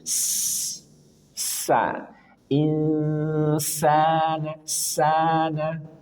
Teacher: sin punya sifat saofir desis